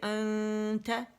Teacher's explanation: حرف اخفا جو ہے تا اس کے مخرج کے قریب جا رہی